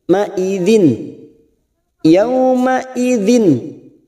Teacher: idzin kasrah tanwin yang bertemu kha, namanya idhar halqi, kita baca jelas tanpa mendengung.